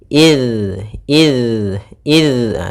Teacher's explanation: sampai memantul huruf dalalnya Jangan dibaca dengan Iz karena di sini huruf dalal yang mana makhrajnya yaitu ujung lidah menempel dengan gigi seri atas · sifat jahar jahar yaitu tertahannya nafas kita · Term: huruf zal